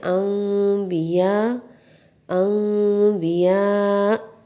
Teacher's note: جیسے کہ نون کی آواز میم سے بدل گئی، اس کو دوسرے الفاظ میں کہتے ہیں کہ نون کی آواز کا میم میں مدغم ہو جانا